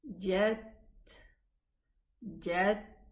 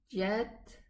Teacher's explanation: the t sound terminates and it has a whispering sound